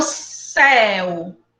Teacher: começa a forte e depois fica fraco de novo é um ditongo decrescente